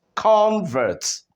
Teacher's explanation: because the stress is on the first syllable, what do we notice? We notice that it is pronounced convert